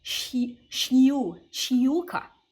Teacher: the vowels after sh are going to get a small Y sound in front of them